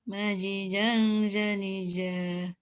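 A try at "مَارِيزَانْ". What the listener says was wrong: Zinya dua ketuk.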